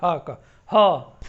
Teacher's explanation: ठीक है, इसका उच्चारण यहाँ से होता है स्वर यंत्रियों से, हा का, हा एकदम जो है कंठ के भीतर से